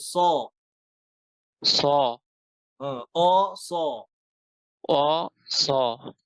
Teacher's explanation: ঠোঁট গোল হবে না অস জিহ্বার গোড়া দিয়ে জিহ্বার গোড়া দিয়ে জিহ্বার গোড়া উঁচু করে হরফ মোটা করতে হবে